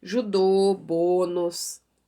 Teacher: Notem que as vogais saem com a boca mais fechada